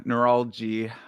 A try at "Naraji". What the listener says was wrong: Naraji. There's no L there.